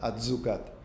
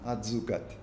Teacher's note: la T en el contacto con la S no deja de ser una S sonora, atzucat, pero hasta en el contacto suena como un poquito más exagerada, atzucat.